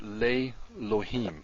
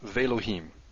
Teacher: the previous vowel lengthened. And it lengthened from the segol to the tzere.